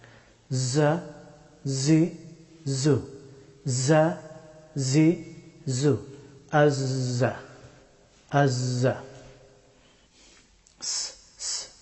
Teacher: জাই হরফটি উচ্চারিত হয় জিহ্বার অগ্রভাগ এবং উপরের এবং নিচের সামনের দুই দাঁতের মধ্যখান দিয়ে